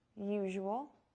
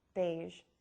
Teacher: the zh is the same as the sh but with voicing